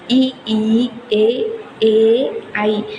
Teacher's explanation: இது எல்லாமே வாயை விரிக்கிறதுனால, இதழை விரிப்பதனால் இந்த வகை சொற்கள் உருவாகின்றன